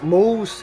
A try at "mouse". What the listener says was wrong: Mo. Yung pronunciation, mo. Yung sa isa, mau. Mo, mau.